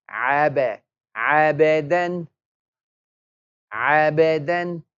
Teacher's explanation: We're going to make the qalqal, an echoing sound on the ba.